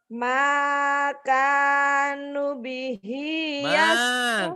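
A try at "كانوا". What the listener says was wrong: Makanu. Panjang semuanya. Bihi panjang juga. Makanu bihi yastahziun.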